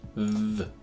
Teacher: So it starts in one place and moves to another. The first sound is between the teeth, and it makes a buzzing sound, th,